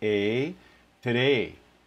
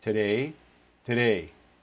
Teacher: the second half of this diphthong may actually go away completely so that you end up with just an a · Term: second half going away